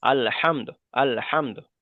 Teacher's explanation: এখানে দালের উপর পেশটাকে সাকিন করে তার আগের অক্ষরের সাথে মিলিয়ে পড়তে হবে, সেই জন্য আল হামদু বলা যাবে না, এখানে পড়তে হবে আল হামদ।